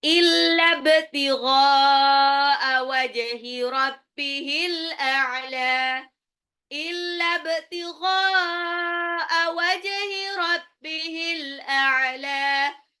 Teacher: Illa btigha, ba-nya itu di qalqalah pantul · Wajhi, jimnya dikolkolahkan. Al-a'la, alif lam qamariyah, lam yang di lam belakang itu dipanjangin.